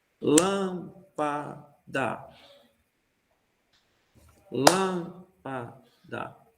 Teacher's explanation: a primeira sílaba é mais forte e segunda e terceira mais um pouco mais fraco